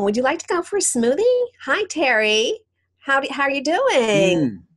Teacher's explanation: that nasal singsong sound that you find young women using